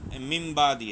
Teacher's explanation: یعنی نون ساکن اور تنوین کو میم سے بدل کر اخفا کریں، یعنی غنہ کر کے پڑھیں، یعنی با اقلاب کا مطلب بدل جانا۔